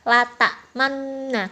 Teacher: Kata nu yang menjadi tambahan hanya diisyaratkan dengan gerakan bibir ditambah mencucu tanpa suara. Jadi suara yang kedengaran hanya lata manna. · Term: ismam